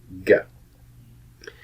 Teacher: But you'll notice that your tongue is moving up to cut off the air completely before there is an explosion of air with the release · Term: G sound